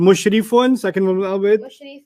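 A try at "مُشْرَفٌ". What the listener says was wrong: Mushrafun. What used to be the E became A. That's all.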